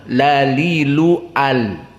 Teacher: lam makhrajnya atraful lisan